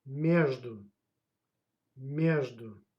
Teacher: And pay attention. The stress goes on a first syllable.